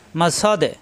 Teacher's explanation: এখানে যেহেতু আয়াতের শেষ, সূরারও শেষ, এখানে আমাদের অক্ষ করতে হবে, তাহলে এখানে সাকিন ধরতে হবে, সাকিন ধরলে সা মিলবে দালের সাথে, সদে ধাক্কা হবে, কলকলা।